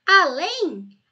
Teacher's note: a sílaba tônica é lem portanto é oxitona